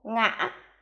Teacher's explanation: tiếng ngã có thanh ngã khi đọc Nhớ kéo dài hơi